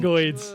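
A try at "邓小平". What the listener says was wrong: Everyone pronounces it dang. It's pronounced dung. Deng Xiaoping,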